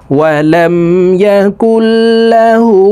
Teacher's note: লাম জবর লা, হা উল্টা পেশ হু, হার উপরে উল্টা পেশ আছে, তাই ঠোঁট গোল করে একালিপ টেনে পড়তে হবে